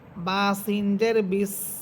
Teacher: আর সিন হরফের যে আমরা সিফাত পড়েছিলাম, যে সিন হরফটি ঝিঝি পোকার মতো আওয়াজ হবে